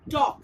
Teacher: L is followed by K, but L remains silent and we pronounce the word as talk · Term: silent L